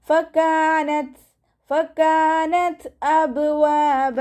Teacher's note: ത സുക്കൂനാവുമ്പോൾ കുറച്ച് air pass ചെയ്യണ സൗണ്ടും കൊടുക്കണേ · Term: ഹാഫ് സുക്കൂന്